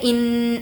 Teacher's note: ان الذین، ان حمزہ نون زیر، ان نون پر تشدید ہے تو غنہ ہوگا